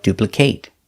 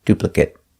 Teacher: So, remember, when you see a word ending with a t and it's a multiple syllable, you have to look closely to know the pronunciation. If it's a verb, pronounce it with the long a like duplicate. If it's not a verb, pronounce it with a short sound, duplicate.